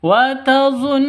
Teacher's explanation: gunnah musyaddadah, dengung 2 ketukan. Wa tazunnuna, nu panjang 2 ketukan karena ada waw mati diawali dengan dhammah.